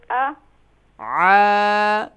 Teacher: کیونکہ کھڑا زبر ہے ایک الف کی مقدار کھینچیں گے